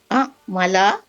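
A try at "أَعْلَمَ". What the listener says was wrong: Lama, kok jadi amala? Hurufnya jangan tertukar.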